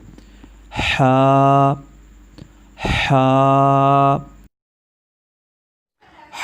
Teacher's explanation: حا کا مخرج حلق کے درمیانی حصے سے ادا ہوتے ہیں